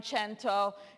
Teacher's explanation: what happened to the Latin k of centum. It turned into ch in Italian